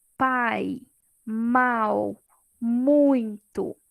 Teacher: E quando ele é decrescente, acontece o contrário. Eu tenho primeiro a vogal e depois a semivogal. · Tá vendo que eu ouço primeiro o som ali mais forte e depois o mais fraquinho? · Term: ditongo decrescente